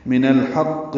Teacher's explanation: حا کی وجہ سے حا وسط حلق سے ادا ہوگا